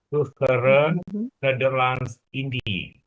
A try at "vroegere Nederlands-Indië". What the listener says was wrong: India. India. Itu trema itu mengatakan bahwa di antara I dan E itu ada E yang harus dibaca dengan jelas. India. India, bukan Indi. India.